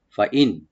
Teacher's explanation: নুন সাকিন এখানে আমরা এজাহার করব, ফাইন, খেয়াল রাখবেন এখানে গুন্না হবে না